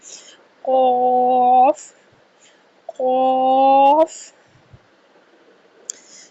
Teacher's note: قاف حروف مستعلیہ میں سے ہے۔ قاف کا مخرج زبان کی جڑ اور تالو کے نرم حصے سے قاف کی ادائیگی کی جائے گی۔ 2 2.5 الف کے برابر اس کو ہم نے لمبا کرنا ہے، اور قاف، الف اور فا 3 حروف کا مجموعہ ہے۔